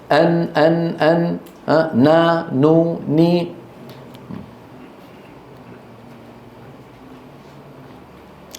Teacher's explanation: طرف اللسان يصطدم مع ما يحاذيه من الحنك الأعلى، ويصاحب ذلك، يصاحبه يعني يكون معه صوت من الأنف اسمه الغنة. مجموع هذين الأمرين يشكل حرف النون. · من طرف اللسان مع ما يحاذيه من اللثة تحت مخرج اللام بقليل، ويصاحبها غنة من الخيشوم